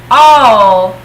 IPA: o: